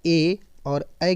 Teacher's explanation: ए और ऐ की बात करें तो यह आपका हो जाएगा कंठ तालव्य। कैसा? कंठ तालव्य।